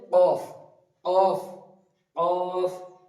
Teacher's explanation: এটা বলার সময় উপরের তালু, উপরের বলতে পারেন এখানে যে আলাজিবি আছে ওটার সাথে বা জিভের শেষ অংশ উপরের তালুর সঙ্গে লাগিয়ে উচ্চারিত হবে অফ · জীবের শেষ অংশ উপরের তালুর সঙ্গে লাগিয়ে উচ্চারিত হবে